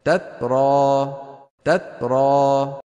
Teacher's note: هذا أتى بالشدة ولم يأتي بالهمس.